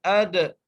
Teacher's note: دال پہ قلقلہ کرتے ہوئے